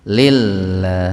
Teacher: tarkik lafdzul jalalah, atau lebih spesifiknya huruf lam dilahului kasroh. Jadi lafaz Allahnya dibaca tipis ya.